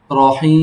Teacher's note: 3 আলিফ টেনে তোমার পড়তে হবে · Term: মদের হরফ